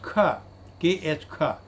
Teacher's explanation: It is velar and it is voiceless as well as aspirated sound.